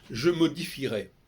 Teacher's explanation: On entend le R de modifierait, de modifier, on n'entend pas le E.